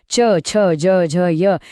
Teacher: च छ ज झ य हे टाळूला जीभ लावून येतात म्हणून ते तालव्य